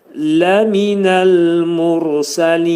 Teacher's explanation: Nun hərfi burunda nə olur? Burunda deyilir və izhar olur.